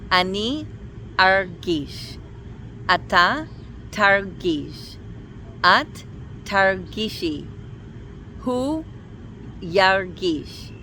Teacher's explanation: the stress is always on the second syllable. It doesn't shift to the last syllable. And also because of that, no vowels anywhere get reduced to a schwa.